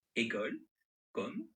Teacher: Ce sont des mots où le O est assez ouvert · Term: O ouvert